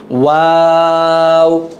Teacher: ঠোঁট গোল করে ওয়াওটা শুরু হবে, গোল করেই আবার শেষ হয়ে যাবে